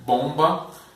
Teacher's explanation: Bom, os lábios abertos, bomba, a gente acaba fechando os lábios por causa do B